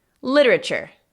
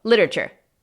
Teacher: Casi llega a ser palabra de 3 sílabas, como lo pronunciamos así sin pensarlo.